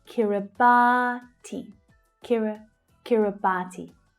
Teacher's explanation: The third syllable is the stressed one.